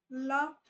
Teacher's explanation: लेटर liquid में क्या है, आपका जो साउंड है वो टंग के साइड से बाहर निकलेगा, जैसे ला बोलो, ला, ला बोलोगे तो आपका जो लिप ये टंग है ऊपर वाले एल्वियोलर एरिया से टच करेगी एंड साउंड जो है उसके साइड से बाहर निकलेगी, ला, ठीक है।